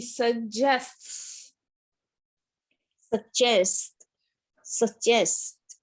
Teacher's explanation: you're saying the s and then you stop it and then you let it out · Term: sts sound